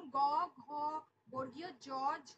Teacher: যেগুলো উচ্চারণ করলে স্বরতন্ত্রের কম্পন হয়, সেই কারণে এগুলোকে বলা হচ্ছে ঘোষ বর্ণ।